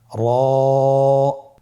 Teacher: র আবার বলুন র এর মাখরাজ কোন জায়গা থেকে স্ক্রিনে দেখুন জিহ্বার আগার উল্টা পিঠ তার বরাবর উপরে তালের সঙ্গে লাগিয়ে উচ্চারিত হয় · র হরফটি এখানে আমরা পুর করে উচ্চারণ করব। মোটা করে উচ্চারণ করব। এবং র হরফটি এক আলিফ টেনে পড়ব।